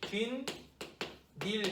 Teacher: 니은 두 개가 첨가돼